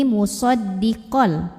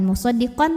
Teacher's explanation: fathahnya masuk ke lam tanpa dengung jadi ini musoddiqol bukan musoddiqon tapi musaddiqol tekan kelam tanpa ditahan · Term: Idam bila gunah